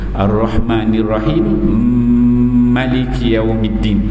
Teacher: apabila dua huruf itu sama, maka dia akan memasukkan mim yang pertama ke dalam mim yang kedua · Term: idgham kabir